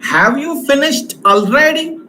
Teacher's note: this Rising tone has been used in yes no type of questions